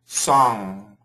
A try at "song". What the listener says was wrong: No, you get the AW. Saw. Saw. And then from there, keep the mouth the same. Song.